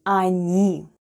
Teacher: The first letter is O and it's unstressed and it's pronounced as A, then goes N and I.